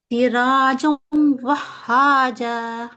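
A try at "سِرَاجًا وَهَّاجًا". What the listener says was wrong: آپ نے کیا، آپ نے جلدی پڑھا، جلدی پڑھی، ہاں تو کیا لگ رہا ہے، ایک ہاں ہے 2 ہاں لگا تسدید،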